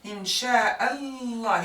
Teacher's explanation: You can put sukun. We don't even pronounce the lam. And you put the emphasis sign shadda with its fatha la.